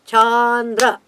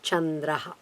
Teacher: It's a palatal, so you have to move the palate a little bit back.